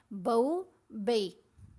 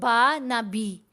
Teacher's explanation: لین حروف کو نرمی سے پڑھنا ہے، ان کو لمبا نہیں کرنا، چھوٹی آواز ان کی پڑھی جاتی ہے، ان کو جھٹکا بھی نہیں دیا جاتا. پھر ان کی آواز ہے تو دونوں کے اوپر دیکھیں زبر آ رہی ہے، لیکن آواز زبر زیر پیش تینوں مووز جیسی آواز نہیں ہوتی.